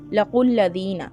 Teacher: قاف کو لام کے ساتھ ملائیں گے، لام کے اوپر تشدید ہے